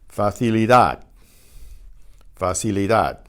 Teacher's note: The final D is almost silent.